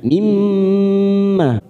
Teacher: Tim mim, mim yang bertasdid bertemu mim yang bertasdid, kita tekan 3 ketuk mimmah, namanya bacaan gunnah. Mimmah fathah diikuti alif, ma-nya yang terakhir ini kita panjangkan